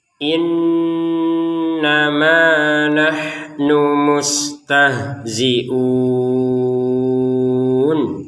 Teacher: Jadi innama ma-nya kita panjangkan 2 harokat.